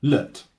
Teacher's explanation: The second syllables of both words is the same, which is an unstressed weak syllable, lut.